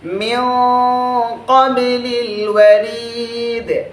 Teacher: আমি যদি এখানে বলি মিন ক্বাবলিল ওয়ারিদ, এই যে মিও বলছি, গুণনা কিন্তু অস্পষ্ট হয়ে যাচ্ছে, মোটা হচ্ছে বাট অস্পষ্ট হয়ে যাচ্ছে